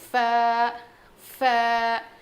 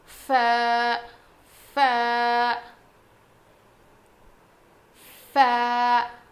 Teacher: سامنے کے جو دو دانت ہیں نا ہمارے, وہ نیچے کے ہونٹ پہ لگیں گے. ف, نیچے کے ہونٹ کے اندر کے حصے کو لگنے سے ف ادا ہوتا ہے.